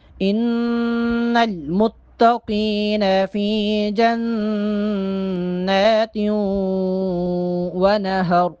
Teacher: نون پر چونکہ کھڑا زبر ہے نون کو ایک الف کے برابر لمبا کر کے پڑھیں گے